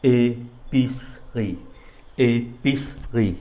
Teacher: cái âm tiết mà mang âm ơ, nó nằm giữa hai cái âm tiết khác, do đó không có đọc.